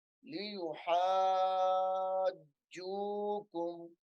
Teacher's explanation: اس کو تھوڑا سختی سے بھی پڑھنا ہے کیونکہ جیم مشدد ہے، اور ہا کے ساتھ جو مد ہے یہ مد لازم ہے، یعنی 3 4 5 انگلیوں کے برابر لمبی ہونے والی مد ہے